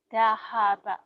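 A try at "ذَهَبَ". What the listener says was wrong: Zahaba, kedengarannya tadi zahaka ya. Makanya saya minta ulang lagi. Zahaba, kemudian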